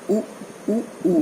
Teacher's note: उ उ उ में ओठ गोल हो जाते हैं